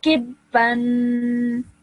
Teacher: Because of the tanween, you have to elongate the sound of noon at the end.